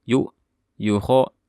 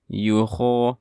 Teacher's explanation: Di sini ada huruf ya sifatnya rokhawah dan juga jahar, jadi pastikan karena bersifat rokhawah suaranya dialirkan, jadi jangan langsung mengatakan yuho, tapi yuho ada suara ya mengalir.